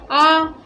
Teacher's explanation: अब यहाँ पे आप एक नोट देख लीजिएगा कि जीव के पचश भाग यानी जो पीछे का भाग है और मध्य भाग के बीच में जीव का जो पिछला भाग है और जो बीच का भाग है यानी कि मध्य भाग, वहाँ से किसका उच्चारण होता है, आ का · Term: वर्तुल